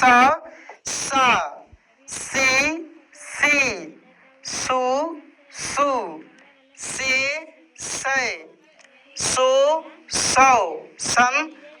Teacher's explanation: दंत स का ध्वनि जो है दांत से निकलता है